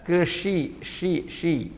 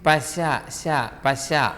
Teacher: പുരുഷൻ കൃഷി എന്ന് പറയുമ്പോൾ ആ കാറ്റ് പരന്നു വരില്ല അതിനെ ബ്ലോക്ക് ചെയ്യും